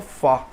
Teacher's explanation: esse lábio dental fá que a gente faz em português